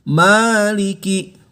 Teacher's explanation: Kalau di surat Al-Fatihah maknya panjang, 2 harokat.